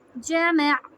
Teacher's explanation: आइन का मखरज हमने टच करना है मीम से, उस पर झटका ना आए और उसकी हरका लंबी ना हो।